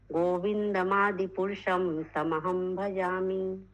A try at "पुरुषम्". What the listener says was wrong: पुरुषम में पुरुष अम नहीं बोला, पुरुष अहम ऐसे करके नहीं बोला। पुरुषम ही बोलना है, आप इतना तोड़ के बोल रहे हैं, इसीलिए मैं बोला।